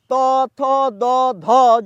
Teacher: ত থ দ ধ যখন বলছি আমার জীভের মাথার অংশটা দাঁতের পিছনকে স্পর্শ করছে সেটি পরিষ্কারভাবে বোঝা যাচ্ছে কিন্তু ন যখন বলছি এমনটি ঘটছে না